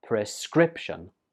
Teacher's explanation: this word has three syllables and the stress goes on the second syllable